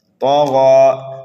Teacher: طا اور غین کو پر کر کے پڑھیں گے، موٹا کر کے پڑھیں گے، دونوں مستعلیہ میں سے ہے